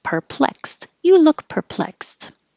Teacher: the X letter is a k and an S and the e d ending sounds like a t so all of this is this perplexed you look perplexed Grudge